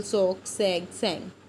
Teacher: the back of the ਟੰਗ, ਜਿਹੜੀ back ਹੈ ਬਿਲਕੁਲ ਟੰਗ ਦੀ ਐਜ਼ ਐਕਟਿਵ ਆਰਟੀਕੂਲੇਟਰ ਰੋਲ ਪਲੇ ਕਰਦੇ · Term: ਵੇਲਰ